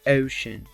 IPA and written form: ˈəʊʃən (ocean)